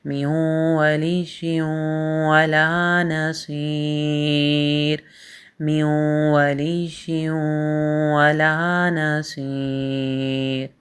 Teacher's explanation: یہاں پہ آپ میم کو واو کے ساتھ ملائیں گے اور یہاں پہ ادغام ہو رہا ہے غنّے کے ساتھ۔ میم واو زیر میوں، واو زبر وا۔